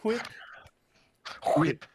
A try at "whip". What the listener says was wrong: are you putting so much emphasis on the H?